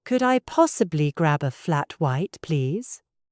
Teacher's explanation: Repeat after me with a gentle, rising intonation.